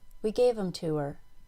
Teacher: the pronouns we them and her were all made very small in fact the pronouns them and her were reduced to M and R